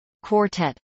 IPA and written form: kwɔːrtˈɛt (quartet)